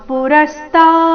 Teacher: ರ ಮೇಲೆ ಆಘಾತ ತಾ ದೀರ್ಘ